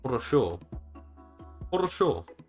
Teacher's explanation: Turkish r at the end of words is the weirdest R yeah it makes a sh sound